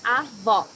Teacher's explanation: Here you need to hear the sound of the last O in the syllable. It should be an open O